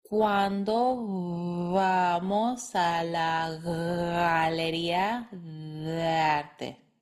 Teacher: Those hard B's, D's, and G's all become soft when connected to other words.